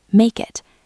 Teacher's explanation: link the words make and it so they sound like one word